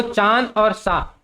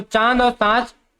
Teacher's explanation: अनुनासिक क्या होता है जिसका उच्चारण पर हवा नाक और मुख दोनों से निकले